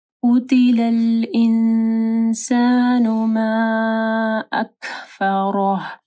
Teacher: ما یہاں پہ مد ہے، اس کے بعد حمزہ ہے تو اس کو لمبا کرنا ہے